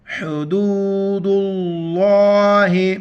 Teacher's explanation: لفظ اللہ سے پہلے دال پر پیش ہے لفظ اللہ موٹا کر کے پڑھیں گے